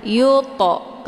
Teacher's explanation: Yuto, to sukun yang terdapat di pertengahan kalimat dinamakan dengan qalqalah surah. Cara bacanya, huruf to-nya dipantulkan dengan pantulan ringan. Yuto, keluar bunyi to.